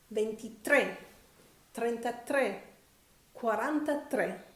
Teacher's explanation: Also, note that from 23, 33, 43, etc., the final E of tre has an accent on it. And so we stress that final syllable.